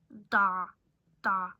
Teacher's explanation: I can feel my tongue further back than the alveolar ridge. It's post-alveolar, but I'm supposed to be...